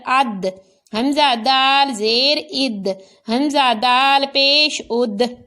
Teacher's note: اب دال پر بھی قلقلہ ہوا کیونکہ یہاں پر دال ساکن ہے، اور ضاد کو صرف پر پڑھنا ہے، اس میں قلقلہ نہیں کرنا۔